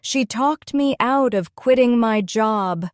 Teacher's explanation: The stress falls on talked out and quitting. The words me of and my are softer and quicker. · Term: sentence stress